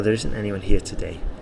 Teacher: the stress is on today okay cuz I want to emphasize that actually today there isn't